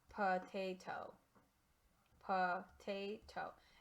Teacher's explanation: That's what I'm talking about when I say that there's a schwa. There's a schwa because the O doesn't sound like its normal short or long sound.